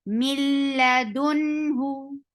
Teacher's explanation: But as we see that there is noon sakin, after noon sakin there is lam, so we are applying idgham surely, and that idgham is without gunnah. We are not keeping the sound in our nose. So this meme will be directly attached to lam.